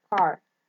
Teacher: We have K, that is voiceless, lingual velar, stop